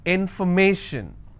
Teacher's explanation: If I have more number of syllables, information, first I will break it in information. So where do I stress? I will stress on may.